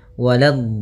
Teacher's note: Waladh, la-nya jangan sampai tebal, jangan waladh, tapi la-nya tipis. Waladh. Baru di dotnya yang tebal.